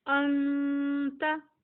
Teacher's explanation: حمزہ زبر نون ان، تا زبر تا، انتا. اب نون ساکن کے بعد تا آیا ہے اس لیے ہم یہاں پر غنہ کریں گے